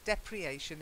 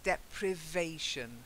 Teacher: you're missing the V, you're just dropping it.